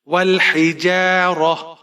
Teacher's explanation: یہاں پر وقف کریں گے تو تا کو ہا میں تبدیل کر دیں گے